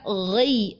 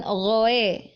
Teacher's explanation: tebalnya bukan karena kita menambah vokal o, tetapi karena pangkal lidah kita mengangkat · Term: huruf isti'ala